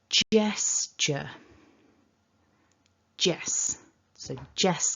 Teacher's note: that we're dividing in the word into two syllables and that the strongest syllable the stress of this word is at the beginning